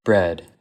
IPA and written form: bɹɛd (bread)